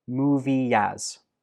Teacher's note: movie of course ends in a vowel e and as begins in another vowel which is the shua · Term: Linkin